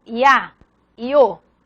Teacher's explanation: Ditongo crescente, começa com uma vogal fechada e vai para uma aberta, por exemplo, IA, IO.